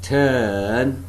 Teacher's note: tongue is raised between the half close and half open positions no firm contact being made between the tongue and the upper molars the lips are neutrally spread